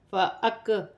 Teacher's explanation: حمزہ کو کاف کے ساتھ ملا کر پڑھا جائے گا، کاف باریک ہے اور ہا پر الٹی پیش ہے، اسے ایک الف کی مقدار کھینچ کر پڑھا جائے گا۔